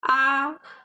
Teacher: from this Mark here the sound goes sweet it goes uh smooth it doesn't goes up or down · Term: first tone